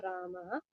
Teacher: विसर्ग को ह आधे ह की तरह प्रोनाउंस किया गया है